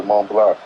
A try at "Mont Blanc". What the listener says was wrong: The C is silent. Mont Blanc.